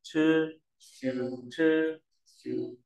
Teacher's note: CH là giống TR nhưng bật nhẹ hơi này